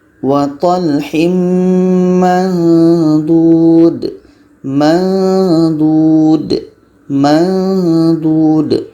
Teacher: Ketika sebut huruf nun, kita sudah merasakan huruf dha.